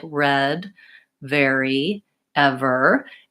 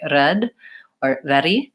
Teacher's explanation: in all of those sounds my R is produced in the back of the mouth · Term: American R sound, back R